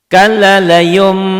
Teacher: bunyi nun matinya berubah menjadi mim. Itulah yang dikatakan iklab.